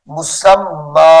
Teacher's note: جب اس کے اوپر وقف کریں گے، ٹھہریں گے، تو اس کو مسمن نہیں پڑھیں گے بلکہ مسمّا پڑھیں گے ، یعنی میم کے ساتھ یا کی جگہ پر ہم الف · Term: وقف کی حالت